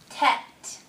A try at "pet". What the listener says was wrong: Okay, that was very close, but can we put our lips together and make the puh sound when we say pet?